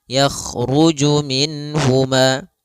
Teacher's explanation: Yaitu mengeluarkan setiap huruf daripada makhrajnya tanpa disertai dengan gunah pada huruf-huruf yang dia dijelaskan yaitu huruf nun. Nun di sini harus jelas karena bertemu dengan huruf ha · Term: izhar halqi